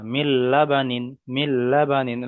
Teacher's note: লা টান হবে না, বা টান হবে না